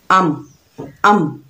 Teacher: जहाँ पर दोनों होंठ मिल गए वो मीम का मखरज है